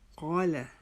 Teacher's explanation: جب ہم الف پڑھیں گے تو وہ الف بھی موٹا پڑھا جائے گا